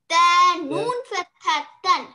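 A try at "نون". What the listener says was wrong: Very good. MashaAllah.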